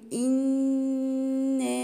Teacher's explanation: النون المشددة عندي غنة بمقدار حركتين، وما انساش ان بعديها في مد طبيعي حركتين.